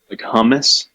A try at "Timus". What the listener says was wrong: Yeah, it's actually spelled exactly the same as hummus, but it is pronounced Timus. It's pronounced with the T, even though it's spelled with the HU.